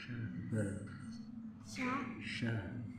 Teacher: Mahrajnya sya. Lidah bagian tengah dengan langit-langit yang lurus di atasnya